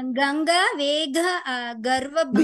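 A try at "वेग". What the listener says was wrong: Vega. It's not a mahaprana.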